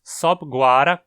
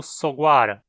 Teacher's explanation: Mas sob-guara causa um encontro consonantal do B com o G. Assim, o B cai fora e a palavra fica sendo soguara. Então essa regrinha de como juntar radicais é muito importante para formar compostos em tupi.